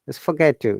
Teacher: just forget to yeah because this t we called it assimilation that just dropped one of the t's